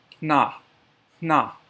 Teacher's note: For the HN sound, puff air out of your nose to make that sound, that HN sound.